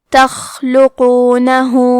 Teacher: ہمزے کا معنی ہے حرف کی آواز ایسے کمزور ہو کہ اس میں پستی پائی جائے، تو ہم یہ کلمہ کو ایسے پڑھیں گے تخلقونہ. حرف القاف کی ادائیگی زبان کے جڑ اور تالوں کے نرم حصے سے ہے. قاف بھی حروف التفخیم میں سے ہے، تو ہم یہ حرف کو موٹی آواز میں پڑھیں گے.